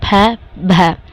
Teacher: तो इसमें प फ प ब ब इसमें कम आवाज़ से बोला जाएगा, कम वॉल्यूम से कम टाइम में बोलेंगे इसको। फ थोड़ा सा ज़्यादा धक्का सा लग के बोलता है, ठीक है, बोला जाता है जैसे फ भ, ठीक है, एक भारी सी आवाज़ में बोला जाता है, ठीक है।